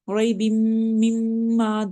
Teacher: ریب مما دونوں میم مشدد ہے اور دونوں کو ہم غنہ کے ساتھ پڑھ رہے ہیں. ریب مما اور سیکنڈ والی میم کے آگے الف مدہ ہے، اس سے ہم ان کو ون فنگر اسٹریچ کر رہے ہیں میم کو.